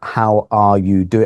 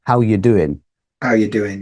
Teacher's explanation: So we kind of skip the R actually. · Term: connected speech